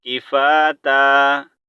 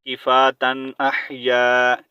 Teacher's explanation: अच्छा, यहाँ पर ता टू ज़बर तन है, लेकिन यहाँ पर जब हम वक़फ़ करेंगे आयत कंप्लीट हो रही है, सही है, तो हम यहाँ पर क्या करेंगे, स्टॉप करेंगे। जब स्टॉप करेंगे तो यहाँ पर हमने एक ज़बर को म्यूट करना है और एक ज़बर को पढ़ना है